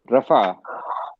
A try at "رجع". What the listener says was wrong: رفع نہیں, رجع. فا کیسے پڑھا آپ نے فا کیسے پڑھا تھا؟